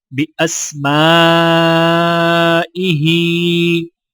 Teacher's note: الف کے اوپر چھوٹا مد ہے تو 3 سے 4 سیکنڈ کھینچ کر پڑھا جائے گا، اور ہا کے نیچے کھڑی زیر ہے تو لہٰذا ایک الف کے برابر کھینچ کر پڑھیں گے۔